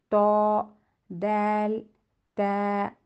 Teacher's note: زبان کی نوک، سامنے والے اوپر کے جو 2 دانت ہیں ان کو بولتے ہیں ثنایا اولیہ، اس کے جو جڑ ہیں، روٹس ہیں، وہاں لگنے سے ادا ہوں گے